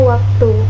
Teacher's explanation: Selanjutnya kita akan membahas mengenai semivokal bilabial W, dilafalkan dengan cara mendekatkan kedua bibir tanpa menghalang udara yang dihembuskan dari paru-paru. Contohnya kata waktu.